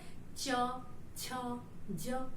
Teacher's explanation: इसको आप अगर आप बोलेंगे तो देखेंगे आपकी जीभ जो है च, छ, ज बोल रहे हैं, तो जीभ आपका ऊपर की तालु को स्पर्श कर रही होगी